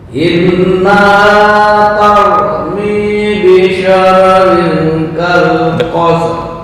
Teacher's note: Innaha tarmi bisyararin kalqasr. Dengung, mohon diperhatikan nun yang bertasydid gunnah ini ikhfa, dengung juga